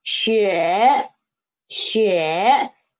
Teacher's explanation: The initial is xi again and the final is yue. And the tone is third tone